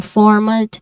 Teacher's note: you start with for this is the first syllable which is the stress syllable